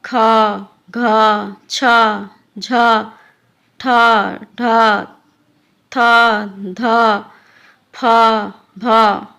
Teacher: जिन व्यंजनों को बोलने में ज़्यादा मेहनत करनी पड़ती है और बोलते समय ज़्यादा हवा निकलती है उन्हें महाप्राण व्यंजन कहते हैं। जैसे ख, घ, छ, झ, ठ, ढ, थ, ध, फ, भ आदि।